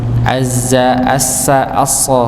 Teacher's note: Ujung lidah bertemu dengan gusi bagian bawah